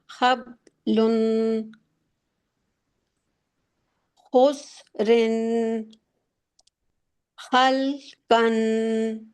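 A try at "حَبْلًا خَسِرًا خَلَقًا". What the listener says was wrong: کھینچنا نہیں ہے، یوں مت پڑھیں کہ آپ لگے کہ توڑ توڑ کے پڑھ رہی ہیں. توڑ توڑ کے نہیں پڑھنا ہے، آپ نے ایک ورڈ کو ایک فلو کے ساتھ پڑھنا ہے. حبلن خسرن خلقن.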